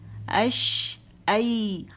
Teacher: یا کے لیے تھوڑی اور زبان نیچے رہتی ہے شین سے تھوڑی اور، تو کیونکہ سافٹ لیٹر ہے تو یا ای آپ لگا کے دیکھیں، اش ای.